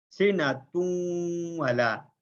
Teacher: ہونٹوں کو مکمل گول کرتے ہوئے نون کی ادھوری سی آواز کو ناک کی جڑ سے نکالتے ہوئے غنہ کی ادائیگی کی جاتی ہے